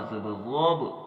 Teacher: ضاد کا ہم نے پر پڑھنا ہے، موٹا پڑھنا ہے، اور با کے اوپر ہم نے قلقلہ کرنا ہے۔